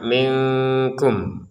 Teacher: nun sukun bertemu kaf dibaca dengan samar minkum. minkum seperti jadi ada jedanya untuk penyempurnaan samarnya itu. · Nah, kemudian nun sukun bertemu kaf dibaca dengan samar